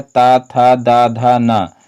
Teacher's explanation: लृ और ता वर्ग और ला और सा इनका उच्चारण स्थान क्या होता है, इनका उच्चारण स्थान दंत होता है